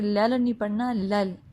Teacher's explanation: لل آواز روک لے کیونکہ ساکن میں آواز رک جاتی ہے